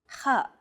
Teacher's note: it sounds as though you're clearing your throat